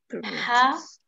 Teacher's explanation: our next word ha comes out from the center part of the throat.